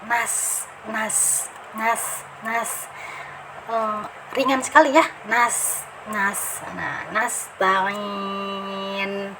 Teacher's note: Jadi pangkal lidahnya tidak usah naik karena dia istifal.